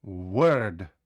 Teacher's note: так само пояснюю як w вимовляється w вимовляється як в в ми не закриваємо губи на звук в ми говоримо в так би хотіли подути в Word Та так